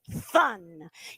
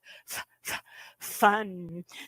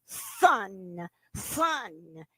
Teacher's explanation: That starts with an F, but instead of a F, we're going to substitute that F with a TH sound. So we're going to say fun.